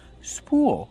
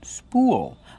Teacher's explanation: We pronounce with a long ooh plus a dark L. Spool. Like cool and pool.